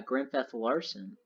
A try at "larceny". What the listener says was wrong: No, it's larceny, not larson. You don't say larson, you say larson.